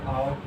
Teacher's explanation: ठीक है, ये क्योंकि इनको बोल के देखोगे तो आपके बीच से लगभग जीभ के सबसे पिछले वाले हिस्से से आवाज हमें आती हुई प्रतीत होती है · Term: पश्च स्वर